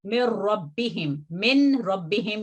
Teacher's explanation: नून की आवाज मुकम्मल तौर पर लाम में और इस मिसाल में रा में मदगम हो जाएगी, और वो नून नहीं पढ़ा जाता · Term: इदगाम